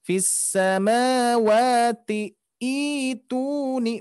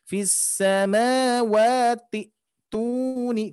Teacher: Jangan sampai fis samawati ituni, bukan, tapi langsung fis samawati tuni, ke hamzah langsung ya. Jadi untuk cara bacanya langsung ke hamzah yang kedua, bukan hamzah wasolnya. Hamzah wasol ketika diwasolkan dia tidak dibaca atau diabaikan.